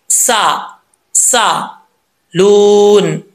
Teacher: अगर सीन पढ़ते वक्त सीटी नहीं आएगी तो समझ लें कि सीन सही तरीके से नहीं पढ़ा जा रहा। सीन को अपने मखरज से अदा करने के लिए सीटी का आना लाजमी है · आगे वाव मद्दा है, 1 अलिफ की मिकदार, इसको लंबा करेंगे